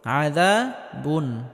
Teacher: হামজা আসার কারণে এখানে তানবিনকে স্পষ্ট করে পড়তে হবে আযা বুন। তবে আওয়াজটা হালকা জারি রাখতে হবে কারণ নুন সাকিনে আওয়াজ হালকা জারি থাকবে।